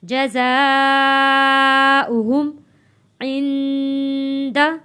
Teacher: واو کے اوپر حمزہ ہے، حمزہ پڑھا جائے گا، واو نہیں پڑھا جائے گا